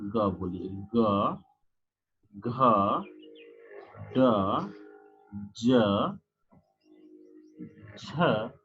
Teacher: वे ध्वनियां जो वाक तंतुओं में अधिक हलचल अर्थात कंपन करते हैं उन्हें घोष ध्वनियां कहते हैं।